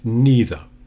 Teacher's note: If I say neither, the E is quite long. Don't shorten it.